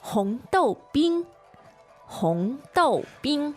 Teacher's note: You've got 3 syllables in Chinese, and they are, once again, 红豆冰， so the tones are, 红豆，第二声、第四声、 yeah, and then the bing, 第一声。 the first tone.